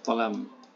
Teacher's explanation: Jadi huruf za menjadi ta dalam bahasa Mandanya.